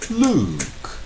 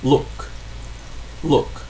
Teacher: nome de homem, Luke, é tenso e é longo. Luke. Mas o verbo olhar é laço e é curto.